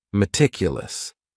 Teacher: That first syllable also has that schwa, that A sound, that reduced vowel sound.